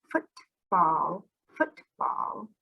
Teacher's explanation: that would be two sounds so when we say football football at the end of foot we just let the air pop out of our mouth we cannot sing this sound of the t if we do